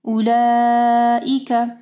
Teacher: اولئک میں دیکھیں مد ہے، ٹھیک ہے، اس کے بعد حمزہ ہے، تو اس کو 4 سے 5 حرکات کے برابر جو ہے لمبا کرنا ہے